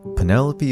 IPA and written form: pəˈnɛləpiː (Penelope)